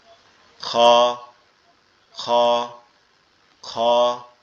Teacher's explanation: অর্থাৎ আমাদের মাথার সাথে আমাদের গলার যে অংশটা লেগে আছে এইখান দ্বারা খ খ খ, এভাবে আওয়াজটা হবে খ খ, এভাবে আওয়াজটা আসবে।